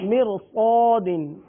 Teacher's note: را ساکن کے آگے حرف مستعلیہ میں سے حرف ہے، را کو پر پڑھیں گے